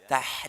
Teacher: ha itu di tengah tenggorokan, maka membaca dengan lembut, ya, lembut, ya, tah, dan ada aliran suara rokhwah.